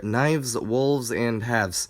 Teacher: the f changes to v and the s changes to z